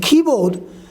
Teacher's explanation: in keyboard, key will be pronounced longer, higher, and board will pronounce a little lower